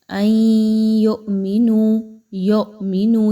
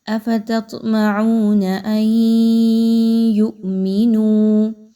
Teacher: یاد رکھیے کہ یہاں پر حمزہ کو جھٹکے دے کر تو پڑھا جائے گا، لیکن یا کی حرکت کو مجہول نہیں کرنا۔ یو کی آواز کو آپ نے یو میں نہیں پڑھنا۔